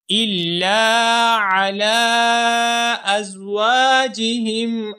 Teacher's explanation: علی، علی میں عین کے بعد جو لام ہے اس لام کے اوپر کھڑی زبر بھی ہے اور چھوٹی مد بھی ہے، تو لام کو ہم چھوٹی مد کی لمبائی کی مقدار کا اعتبار کرتے ہوئے تین الف کے برابر لام کو کھینچ کر پڑھیں گے